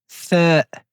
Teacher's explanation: pour prononcer la lettre Th, nous devons mettre le bout de la langue sur le bout des incisives supérieures. Donc le bout de la langue sur le bout des dents du haut.